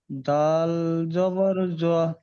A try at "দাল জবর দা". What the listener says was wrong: না কেন এখানে তো দাল আছে জ কিভাবে আসবে